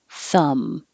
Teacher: thumb has a silent b so forget about it you're just closing your lips for the m thumb and the vowel is uh uh thumb 25 is the